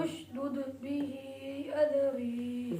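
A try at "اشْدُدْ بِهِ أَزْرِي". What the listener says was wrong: जा को सख्ती से पढ़े। अज़री नहीं करना।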